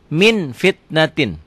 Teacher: tanwin bertemu dengan Va bunyinya berubah menjadi mm akan tetapi mutlak tidak tertutup rapat masih ada udara yang keluar ketika membacanya ikhfa